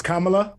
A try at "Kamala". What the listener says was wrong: Kamla. No middle syllable. It's two syllables. It's Kamla.